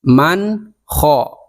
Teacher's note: nun sukun bertemu dengan kho, maka dibacanya jelas, jangan mang kho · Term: idhar halqi